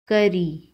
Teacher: کاف زبر کا، را زیر ری، کری، را کے نیچے زیر ہے، را کو باریک پڑھیں گے